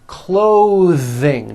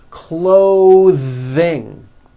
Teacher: Notice how my tongue comes out in the middle of the word and the TH sound is pushed out.